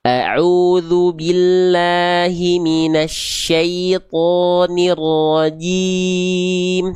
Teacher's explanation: Lalu jim jangan keluar becek-becek nafas. Huruf jim enggak punya sifat hamz tapi dia sifatnya tidak mengalir nafas ya.